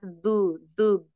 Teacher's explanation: dalal itu ujung lidah menyentuh gigi seri bagian atas